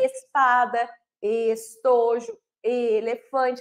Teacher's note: Eu tenho um e mais fechado é diferente a minha boca · Eu já tenho o E fechado. Olha a boquinha aí, um pouquinho mais fechada. Eu tenho o papai vibrando, então, na palavra espada, estojo, elefante, eu tenho um E mais fechado.